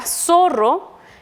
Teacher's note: Luego vemos la palabra zorro, que también con la R, que es doble y representa un sonido más vibrante, es un dígrafo.